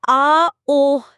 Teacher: Vocal fold দুটো শক্তভাবে একসাথে আটকে গিয়ে বাতাসের প্রবাহ সম্পূর্ণ বন্ধ করে দেয়, আর তারপর হঠাৎ করে খুলে যায়। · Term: গ্লটাল স্টপ